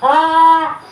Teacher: ہا حلق کے اوپر والے حصے سے ادا ہوتا ہے